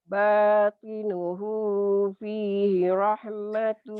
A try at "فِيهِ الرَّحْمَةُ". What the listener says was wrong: Fihir ada tasdidnya begini. Fihir masuk.